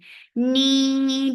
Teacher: For kasra give e sound attached with noon. Noon only gets sifa of kunna, and this kunna is akmal, so keep the sound in your nose for a longer time. Ni 2 counts too long.